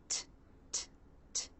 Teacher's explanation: Tongue tip is at the roof of the mouth, teeth are together, the air is stopped. Then the tongue tip pulls down, the teeth part, and the air is released. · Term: true T sound